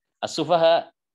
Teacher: Jadi ketika antum bacanya di awal Bismillahirrahmanirrahim, pas dikata ini as-sufaha harus dibaca 6 harokat. As-sufaha nggak boleh dibaca 4 harokat.